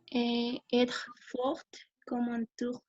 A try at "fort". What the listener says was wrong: Fort, non se pronuncia la T.